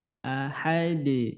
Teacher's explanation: ketika huruf Dal sukun maka terjadi pantulan Ahad namanya qqalah Kubro Iya jadi pantulannya kuat ya pantulannya kuat